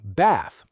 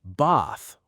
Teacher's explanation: In American English, we say bath, short A. In British English, many people say bath, longer A.